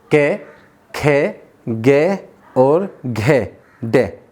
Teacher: कै, खे, गे, घे और डे सबका उच्चारण करेंगे तो घर्षण जो है, जो कंपन आएगी वो हमारे कंठ से आएगी · घर्षण जो वायु का होगा वो कंठ की तरफ होगा, कहीं भी नहीं होगा